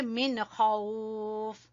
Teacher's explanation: من کے بعد خا ہے حروف ہلکی میں سے تو یہاں پہ اظہار ہوگا